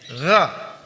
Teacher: mengucapkan huruf gha tidak boleh monyong. Gha enggak boleh, tapi gha terbuka bibirnya.